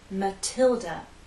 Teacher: this this name is Mathilda stress on the second syllable Matilda the T is stressed so we have a true T sound